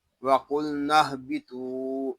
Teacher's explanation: قاف کو ہم پر پڑھیں گے کیونکہ یہ حروف مستعلیہ میں سے ہے. لاگے لام ساکن ہے، اس کو سکون کے ساتھ ادا کریں گے، اس کو قل نہیں پڑھیں گے، اس کو پڑھیں گے وقل.